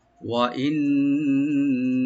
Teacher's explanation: নুন মুসাদ্দাদ এখানে গুণনা করবেন, ডাবল গুণনা, মানে ওয়াজিব গুণনা একালি পরিমাণ।